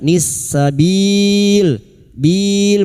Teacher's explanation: bertemunya mad dengan huruf hidup yang dibaca wakaf mad arid li sukun empat harakat